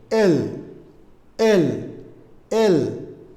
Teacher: জিহ্বার অগ্রভাগ উপরের দাঁতের মাড়িতে স্পর্শ করতে হবে